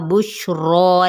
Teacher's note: शीन पे तफशी ये लेटर कहलाता है, इस पे बुश ये वाली साउंड आती है